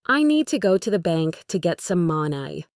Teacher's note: The important words are need, go, bank, moni. The other words are quick and quiet.